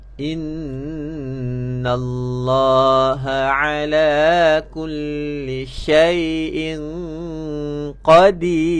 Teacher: Walaupun ra baris depan, tapi kita wakaf, kita mati, dibaca nipis sebab sebelum huruf ra berbaris bawah.